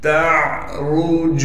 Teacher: تعرج، تا کو عین سے ملا دیں گے اس لیے کہ عین ساکن ہے، عین کو صاف کر کے گلے سے نکالیں گے۔ را کو موٹا پڑھیں گے اس لیے کہ را پر پیش ہے